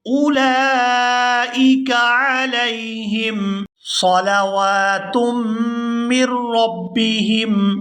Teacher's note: اولئک علیہم، عین کو اس کے مخرج سے صحیح طور پر ادا کیا جائے گا، علیہم، اولئک علیہم صلوات من ربہم، یہاں واو کے اوپر کھڑی زبر ہے تو اس کو کھینچ کر ادا کریں گے